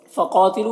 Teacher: क़ाफ हुरूफ़ मुस्तालिया में से पुर पढ़ेंगे और अलिफ मद्दा है, एक अलिफ के बराबर खींचेंगे।